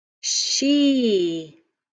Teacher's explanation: it's open syllable there's nothing closing it in so my vowel sound is long my e is saying its name so let's look i've got one vowel so it's one syllable